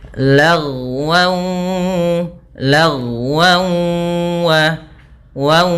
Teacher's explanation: tidak lagi dibaca lagwan, akan tetapi langsung ke waw dan kita tahan gunnahnya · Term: idgham bi gunnah